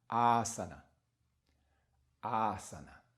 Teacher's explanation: the first one has to be that sound of, that long sound of ah, and you hold it.